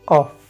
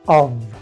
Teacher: la posición de la boca para producir estos sonidos se conoce como labio dental